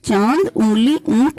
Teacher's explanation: क्योंकि स्वरों की भांति अनुस्वार का भी चिन्ह होता है, अतः इसकी स्थिति स्वर तथा व्यंजन के मध्य की हो जाती है। अनुनासिक में बोलते समय मुख तथा नासिका दोनों में श्वास निकलता है · अनुनासिक में बोलते समय मुख तथा नासिका दोनों में श्वास निकलता है तथा इसका प्रयोग इस प्रकार होता है, जैसे चांद, उंगली, ऊंट आदि। इसमें मुंह से भी श्वास निकलता है और नाक से भी श्वास निकलता है।